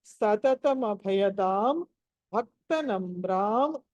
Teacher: సతతం అభయదాంలో భ మహాప్రాణము, భక్త నమ్రాంలో భ మహాప్రాణము